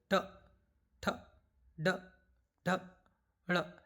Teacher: मूर्धा से उच्चारित वर्ण है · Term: ट वर्ग